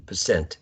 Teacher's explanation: the word stress is in the second syllable, percent. And this dot here, or period, indicates the division of syllables.